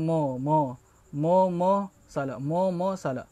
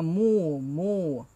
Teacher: Mu betul-betul baris hadapan kena betul-betul kasih depan dia. Jadi kita kena kasih muncung kita punya bibir. Mu. Dia bukannya mo, salah.